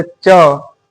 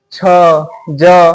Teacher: देखिए जैसे हम लोग बोल के भी देख सकते हैं, जैसे च, तो च बोलने पे हमें जोर पड़ता है कि तो हमारा जीभ किससे सट रहा है, तालु से सट रहा है। छ ज, तो ये सब बोलने पे हमारा जीभ तालु से सटता है